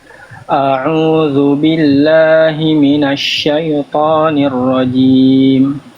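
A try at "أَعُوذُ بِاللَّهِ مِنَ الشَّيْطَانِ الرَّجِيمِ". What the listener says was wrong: Di bagian syai jangan masuk hidung. Syai, syai, jangan syai to, syai, syai, jangan sampai si khoisyum, jangan sampai sengau bunyinya. A'udzu billahi minasy syai, jangan syai, syaitonir rajim.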